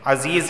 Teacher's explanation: عزیز، تنوین کے بعد ذال آیا ہے اور ذال حروف اخفا میں سے ہے تو اخفا والا غنہ ہوگا، یعنی زبان کے نوک اوپر کے تالو سے نہیں لگے گی۔ عزیز، یا سے پہلے زیر ہے تو اسے ایک الف کے برابر کھینچ کر پڑھا جائے گا۔